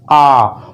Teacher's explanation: ये इसको जब बोलते हैं विपरीत स्वर को आ, पूरा मुंह खोलना पड़ता है आपको। विपरीत स्वर को जब बोला जाता है तो पूरा मुख खुल जाता है